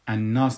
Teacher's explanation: پس وقتی که ما ایده تلفظ میکنیم لامشه تلفظ نمیکنیم، در عوضش ما نونشه مشدد میسازیم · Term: لام شمسی